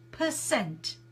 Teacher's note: The syllable stress is on the cent